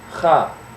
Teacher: the back of your tongue will actually touch the uvula that little dangly thing in the back of your throat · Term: the KH sound